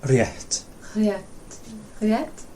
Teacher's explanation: sometimes you want to put a vowel on the end, so you say rétta, but it's just rétt